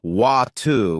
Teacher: In American English, people might say water with a D sound, while in British English, it's often water with a T sound. It's the same word, but it sounds different.